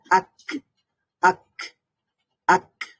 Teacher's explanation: কাফের মধ্যে পাল্টা আওয়াজ তৈরি হবে না এখানে সাউন্ডটা একেবারেই বন্ধ হয়ে যাবে কিন্তু বাতাসটা বের হবে সাউন্ড বন্ধ হয়ে যাওয়ার পরেও বাতাস বাকি থাকবে যেমন আক তারপরে